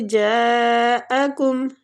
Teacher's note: جا کو کھینچیں گے مد واجب متصل ہو رہی ہے